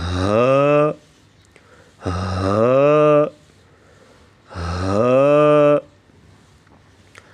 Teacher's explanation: زبان کی جڑ کو حلق کی طرف دبائے بغیر باریک اور رگڑ کھاتی ہوئی سانس میں پڑھیں گے